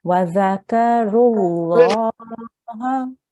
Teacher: So you join your lam, you join your ra directly to your lam.